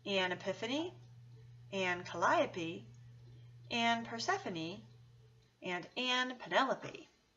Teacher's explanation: they are all four syllables with a stress on the second syllable